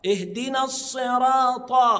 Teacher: والطاء من احرف التفخيم يبقى انطقه مفخمه